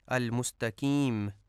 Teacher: المستقیم میں دو نقطے والی قاف کو باریک پڑھا جاتا ہے، کاف کشش والی پڑھا جاتا ہے، المستقیم، جو کہ درست نہیں ہے۔